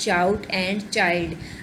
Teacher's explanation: Examples of palatals are the initial sound in the words shout and child. अब इसमें श और च की जो साउंड है ये दोनों जो हैं ये वॉइसलेस हैं.